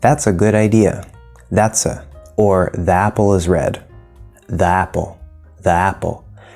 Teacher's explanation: The articles a and the also usually reduce to the schwa sound.